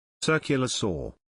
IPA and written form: ˈsɜː.kjə.lə ˌsɔː (Circular Saw)